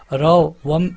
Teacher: र वत्य है, लुंठित है, सघोष है और अल्प प्राण व्यंजन है